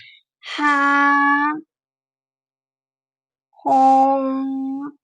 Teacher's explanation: ہا کو حلق کے بیچ سے ادا کریں، اس کی آواز باریک آنی چاہیے۔